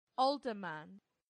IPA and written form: ˈɔːldəmən (alderman)